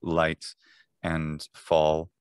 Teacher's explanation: as an American speaker of English, I, of course, velarize both initial and final and medial L pretty regularly